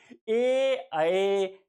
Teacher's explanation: कंठ भी लगता है और तालु भी लगता है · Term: कंठ तालव्य